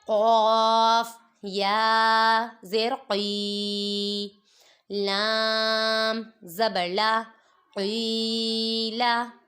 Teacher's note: قاف کو پر پڑھیں گے، حروف مستعلیہ میں سے ہے، ادھر یا مدہ ہو رہا ہے، اور لام متحرک۔